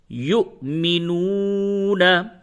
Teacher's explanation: इस पे जज्म है। तो यह वाव मद्दा है। इसको खींच करके पढ़ेंगे तो इसकी सही अदायगी है